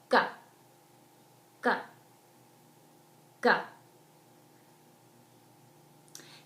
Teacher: g sound is made at the throat